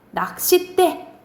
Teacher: 낚싯대 뒤에 된 소리가 나죠.